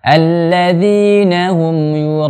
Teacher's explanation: yang dibolehkan adalah yura lebih panjang daripada unnya